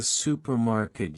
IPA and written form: ˈsuːpərˌmɑrkɪt (supermarket)